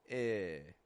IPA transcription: ŋ